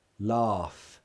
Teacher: Laugh. There's no vibration. Laugh. It's just air. There's no vibration.